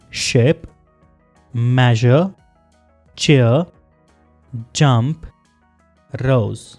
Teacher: एयर टंग और post alveolar रिज के दरमियान से फ्रिक्शन से निकलती है।